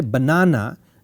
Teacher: when you say banana the second na has a much more bigger stress compared to the third